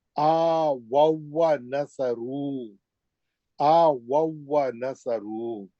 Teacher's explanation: واو ساکن کو واو مشدد میں ادغام متماثلن کر دیں گے اور سیدھا پہلے واو کے زبر سے مشدد واو میں چلے جائیں گے